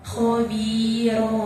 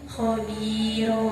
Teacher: maka cara bacanya fathatain tersebut diganti menjadi fathah dan dibaca panjangnya 1 alif atau 2 harokat